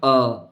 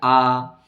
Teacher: अ जो ह्रस्व है वो तो एक मात्रिक अ, ऐसे उच्चारण। दीर्घ को उच्चारण करने में 2 मात्रिक समय लगेगा आ